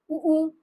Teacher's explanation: ओष्ठ का उ, बहुत बहुत ही ज्यादा आसान है। ओष्ठ का हमारे ओठ जो है वो गोल हो रहे हैं